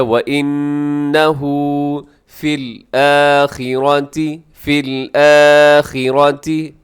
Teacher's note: خا موٹا پڑا جائے گا اور اس کے بعد جو را ہے، را بھی موٹا پڑا جائے گا۔ · نون مشدد پہ غنہ کیجیے گا اور الٹا پیش کو لمبا کیجیے گا